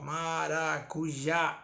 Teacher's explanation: O já tem um certo destaque, então ele é a sílaba tônica.